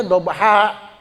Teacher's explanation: Alifnya jadi berfungsi panjang menjadi dua harakat. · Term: mad iwad